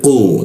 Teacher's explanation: huruf ku disikut tenggorokan, lidahnya dinaikkan. Ku, tidak ada hembusan udara ketika membaca